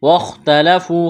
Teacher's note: وَاخْتَلَفُوا، خا کو موٹا کرنا ہے، واو مدہ ہے